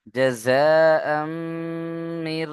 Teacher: মিম তাসদীদ কে গুণনা করা ওয়াজিব। এই যে মিমের উপরে তাসদীদ, গুণনা করা ওয়াজিব।